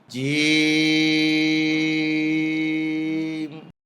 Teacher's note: জিহ্বার মাঝখান উপরের তালুতে উঠবে, শক্ত সবল আওয়াজ হবে